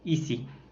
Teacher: C'est une voyelle fermée en raison de l'élévation de la langue. C'est aussi une voyelle étirée en raison de la position des lèvres.